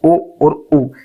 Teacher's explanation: तो ए और ए को कंठ तालव्य स्वर कह रहे हैं। कंठोस्थ स्वर जिसमें कंठ और ओष्ठ दोनों का उपयोग हो रहा है